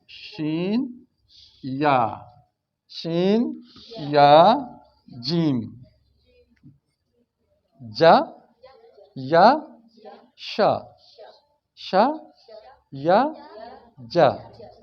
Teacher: زبان کا جو درمیان والا حصہ ہے تقریباً وہ اوپر تالو کی طرف اٹھ رہا ہے، کبھی جڑ جاتا ہے، کبھی لٹکا رہتا ہے، ٹچ نہیں ہوتا، صرف مائل ہوتا ہے، ٹھیک ہے؟